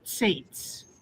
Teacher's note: The tsadi has a tendency to become z, but it's not a z, it's not a zayin, it's a tsadi.